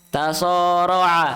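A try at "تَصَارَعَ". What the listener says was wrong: Perjelas huruf so-nya. So. So.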